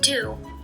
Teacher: the immediate voice onset of duh causes us to perceive do differently from the word to